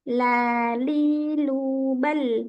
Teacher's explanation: lidah kita tidak sempurna lurus tapi agak menyimpang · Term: inhirf